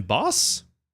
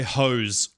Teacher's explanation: an S and a zed, the only difference between them is that you use your vocal cords. They have the same mouth place of articulation is what that's called.